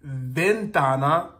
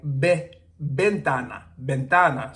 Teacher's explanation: yeah V and B in Spanish make the same sound so V is not like the V sound in English but it sounds more like b